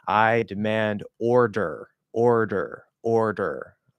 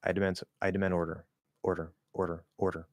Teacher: I'm not making full contact with the tip of my tongue. I'm not up here.